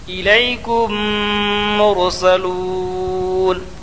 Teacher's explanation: الیکم، کم میں ادغام شفوی ہوگا، میم ساکن کے بعد میم آیا، اس لیے میم کو میم سے ملا کر غنہ کے ساتھ پڑھا جائے گا